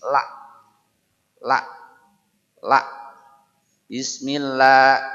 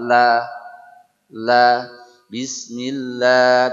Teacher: sini jadi dia banyak banyak menggunakan tepian ujung lidah ya sementara untuk orang Indonesia kebanyakan menggunakan ujungnya ya sehingga suara lamnya lebih tipis